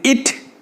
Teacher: The front of the tongue is raised to a position between close and half close.